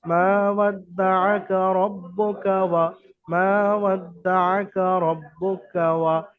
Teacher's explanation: দেখেন মা ছাড়া কোনোটাই টান হয়নি, এবারে তাসদিদ থাকার কারণে ওখানে ডবল উচ্চারণ হয়েছে দুটো, বা এবং দাল · মা এক আলিফ টান হবে, আর রব্বুকা ওয়া পর্যন্ত তাড়াতাড়ি পড়বেন, যেহেতু প্রত্যেকটা হারাকাতের কাজ আছে।